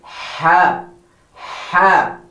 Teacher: pronunciation of ha is from the middle of the throat